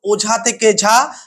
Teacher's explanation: যেমন ওঝা থেকে ঝা, ওঝা এই ঝা শব্দের উপর জোর পড়ছে, ফলে এই ঝা অক্ষরের উপর জোর পড়ায় ও অক্ষরটি আস্তে আস্তে বা ও স্বরটি আস্তে আস্তে বিলুপ্ত হয়ে যাচ্ছে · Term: আদিস্বর লোপ